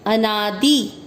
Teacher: अ पूरा है तो आपको अ के अंदर अ इस तरह से बोलना है। ना दी की मात्रा छोटी लंबा नहीं खींचेंगे।